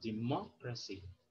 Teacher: you put stress on the third from end syllable